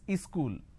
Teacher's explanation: They pronounce this as school. Wherever there is a word that starts with the s sound, they add a e in front.